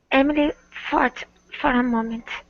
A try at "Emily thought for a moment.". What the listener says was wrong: Give me a good R sound instead of saying for a moment. It's for a moment. Emily thought for a moment.